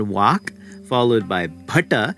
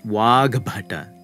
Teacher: the ka turns voiced and it matches the voicing of your ba of bada note however that it doesn't gain that aspiration of the we